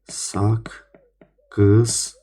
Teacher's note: Qoşa K-də birinci yenə stabil olaraq qalır. İkinci K-nin cingiltili qarşılığı G samitinə çevrilir.